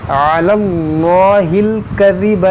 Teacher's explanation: جلالت سے پہلے زبر ہے تو اس کو ہم موٹا پڑھیں گے اور اس کو وسط حلق سے ادا کریں گے